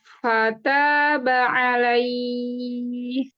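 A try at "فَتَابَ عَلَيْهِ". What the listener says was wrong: La. La-nya agak ke e. Nggak boleh. Ala. Jadi la-nya sempurna dulu. La. Jangan buru-buru ya. Langsung ke ya itu nggak boleh ya. fathahnya kegoyang itu.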